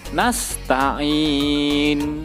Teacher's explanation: Nun harokatnya diganti menjadi sukun itu namanya waqaf Iskan